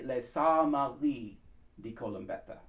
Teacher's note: The R's in the back of the tongue, the back of the throat.